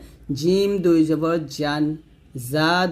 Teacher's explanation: জিম জিহ্বার মধ্যখান থেকে উচ্চারণ করতে হবে